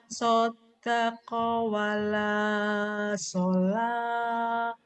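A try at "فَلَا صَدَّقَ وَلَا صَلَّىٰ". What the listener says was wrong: Fala saddaqa wala sholla. Nyambernya kurang Bu, kurang nyamber. Ayo, ada tasdid nyamber dan double, kurang nyamber yuk.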